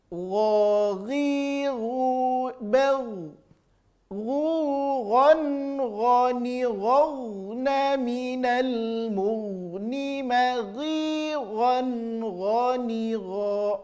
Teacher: Huruf gha sama rasa, ya. Terasa di ujung tenggorokan keluarnya, tapi lebih lembut saja bunyinya daripada huruf kha.